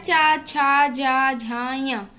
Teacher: जो चा वर्ग होता है इसका उच्चारण स्थान तालु होता है